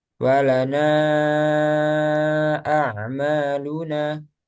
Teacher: walana a'maluna ini kan empat atau lima harakat ya kan kita baca dengan tiga harakat